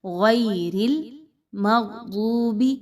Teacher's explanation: रा के नीचे ज़ेर है, उसको बारीक पढ़ेंगे, मोटा नहीं पढ़ना। · गैन और दाद दोनों मोटे हरूफ हैं, किसी भी कंडीशन में हो मोटे पढ़े जाते हैं, इनको मोटा पढ़ा जाएगा।